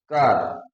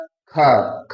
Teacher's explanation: क में कम वायु निकला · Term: अल्प प्राण